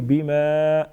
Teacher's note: با مشدد ہے مضبوطی کے ساتھ ذرا رک کر ادا کریں گے. بما الف مدہ ایک الف کے برابر کھینچیں گے